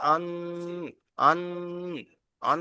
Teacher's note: আনলে একা আলিফ পরিমাণ টান দিতে হবে। গন্নার টান হল একা আলিফ পরিমাণ